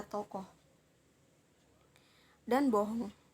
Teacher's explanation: Lanjut ada O. O ini termasuk dalam vokal belakang. Vokal sedang bawah, mulut membundar saat melafalkan bunyi O, serta termasuk dalam bunyi semi terbuka, seperti kata tokoh dan bohong.